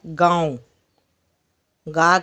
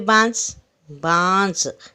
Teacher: नाक से हवा एक साथ बाहर निकल रही है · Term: चंद्र बिंदु